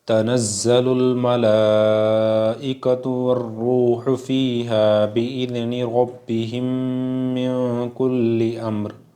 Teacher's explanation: ربہم میں ادغام شفوی ہو رہا ہے، میم ساکن کے بعد میم آئے تو میم کو میم سے ملا کر غننے کے ساتھ پڑھا جائے گا، اسے کہتے ہیں ادغام شفوی۔